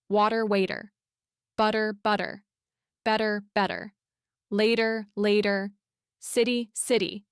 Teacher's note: When the letter T appears between two vowel sounds in American English, it transforms into this soft, quick sound that's almost like a very light D. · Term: flap T